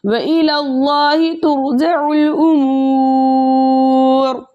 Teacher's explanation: واو مد 2 حرکت کی مقدار کھینچ کر پڑھتے ہیں، لیکن آگے رو کا سکون عارضی وقف کی صورت میں آ رہا ہے، اس لیے یہاں پر مد بنے گی مد عارض وقفی، جس کی مقدار 2 4 6 حرکت ہے، لیکن 6 حرکت کی مقدار کھینچ کر پڑھنا زیادہ بہتر ہے۔ · حالت وقف میں رو کی پیش حذف ہو جائے گی، رو ساکن ما قبل حرف ساکن ما قبل حرف مضموم ہے، اس لیے اس رو کو ہم موٹا پڑھیں گے، یعنی رو ساکن سے پہلے والا حرف ساکن اور اس سے پہلے والے حرف کے اوپر پیش ہے، اس لیے اس رو کو حالت وقف میں بھی ہم موٹا پڑھیں گے۔